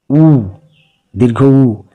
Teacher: দেখো উ উচ্চারণ করে দেখো, তোমার ঠোঁটটা কি সুন্দরভাবে গোল হয়ে যাবে, এই জন্য এটা ওষ্ঠধ্বনি।